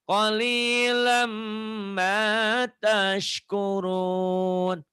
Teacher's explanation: Jangan kolilan. Kolilam, N-nya masukin ke M. Diidghamkan, dileburkan.